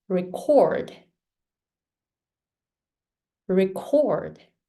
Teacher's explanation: cord is stronger than re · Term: stressed syllables